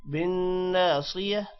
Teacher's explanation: بالناصية نون پر بھی غنہ ہوگا اور صاد موٹا ہوگا